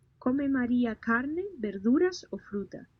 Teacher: the pitch goes up when you talk about carne, and it goes down when you reach fruta